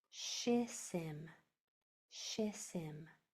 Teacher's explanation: Now when I put these two syllables together, these two S's are going to combine into one sound